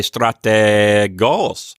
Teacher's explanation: I know because of my vocal inflection that the accent is on the final syllable